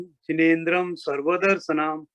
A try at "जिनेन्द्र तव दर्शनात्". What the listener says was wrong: सर्व नहीं, तव दर्शनात्।